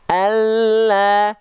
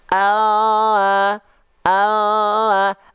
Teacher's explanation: lam itu dilafalkan dari tepi tepi lidah atau samping lidah atau sisi lidah · nah disentuhkan ke langit-langit contoh pelafalannya akan seperti ini sahabat Alla dia lidahnya lebih penuh yang nempel all Alla kalau l hanya ujung akhir lidah saja all all dari segi bunyi pun lam Alla dengan l all